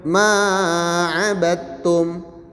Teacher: ba langsung masuk ke ta, dalnya tidak kita baca